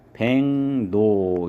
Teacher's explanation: 기역이랑 리을이랑 만나면 기역은 이응으로, 그러면 리을도 니은으로 이렇게 돼서 발음은 백노 이렇게 발음을 해야 돼요. 그래서 로로 발음을 하면 안 되고 노로 발음을 해야지 된다. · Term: 비음화 현상